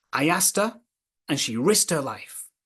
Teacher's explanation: so you notice how the H sound can also disappear · And then the t in asked and risked links to the vowel sound. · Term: elision of k